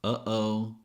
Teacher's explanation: Notice that when you say uhoh, it's almost like you're blocking the air.